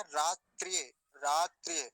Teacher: त्रकार जो है वो आधा है, मतलब वहां त भी आधा है, रेप भी आधा है, तो दोनों को जल्दी ही बोलेंगे